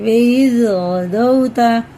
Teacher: गैन हुर्फ़ हल्क़ी में से है, इधर हल्क से ही पढ़ेंगे